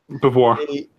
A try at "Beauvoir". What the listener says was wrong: Actually, I think you pronounced the R. I think it'll be Beauvoir.